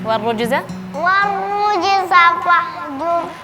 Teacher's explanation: Di sini sama berkaitan tentang tebal dan tipis juga. Jadi waw di sini seharusnya tipis wa. Terus setelahnya ada ro yang tebal. Jadi jangan sampai bacanya warrujza.